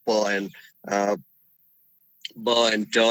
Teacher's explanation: when you hold the air in your mouth and then with the pressure when the pressure is built you release it suddenly it becomes a plosive sound